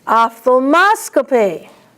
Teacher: Ophthalmoscopy, the accent is on MOS.